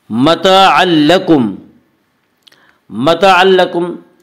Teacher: الف مدہ کو ایک الف کے برابر کھینچ کر پڑھیں گے۔ متاعا لکم، متاعا لکم میں ادغام بلا غنہ ہوگا، جسے ادغام تام بھی کہتے ہیں۔